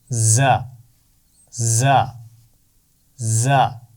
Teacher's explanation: सख्ती से अदा की जाती है ज और इसका मखर है जुबान की नोक नीचे वाले दांतों के सिरे से लगाकर दोनों दांतों को थोड़ा सा क्लोज करेंगे बिल्कुल बंद नहीं करेंगे थोड़ा सा गैप रखेंगे और इसकी आवाज सीटी के साथ अदा होगी